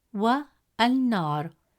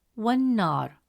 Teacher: when waw is added before al-nar, the alif hamza sound is skipped. Instead of saying wa al-nar, it becomes wan-nar, flowing smoothly from wa to nar. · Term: Hamzat al-Wasl